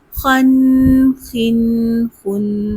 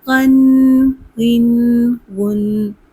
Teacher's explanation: غین بھی ادنے حلق سے ادا ہوتا ہے اور پر حروف میں سے ہے